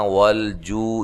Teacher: جو و مدہ ہے، عین کو واضح نکالنا ہے